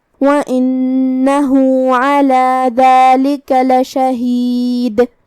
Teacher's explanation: کلمت علی میں حرف العین کی ادائیگی حلق کے درمیان والے حصے سے ہے